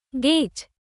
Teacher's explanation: The vowel glides, hold it slightly longer than get. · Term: long vowel a